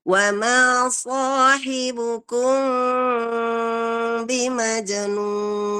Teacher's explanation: Sementara ini kita baca secara samar. Ikhfa syafawi, samar di bagian bibir.